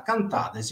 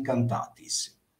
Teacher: C'è solo una piccolissima differenza nella sonorizzazione della seconda persona plurale da cantades in cantatis.